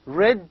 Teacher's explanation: formed with the tongue tip and the tongue tip raised and curled back near the alveolar ridge so when you pronounce you feel that the tongue curled back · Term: the r sound